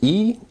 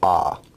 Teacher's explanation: terms of height vowels are either considered high mid or low e is an example of a high vowel and ah is an example of a low vowel